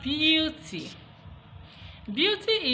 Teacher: so we have Beauty now this e a u all right the EA which are normally vowels have now been converted to the semivowel here and that semi is a palatal sound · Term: palatalization